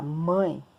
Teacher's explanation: se eu falar mãe, né, o A é mais forte, o E, que a gente pronuncia como se fosse I, é mais fraco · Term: ditongo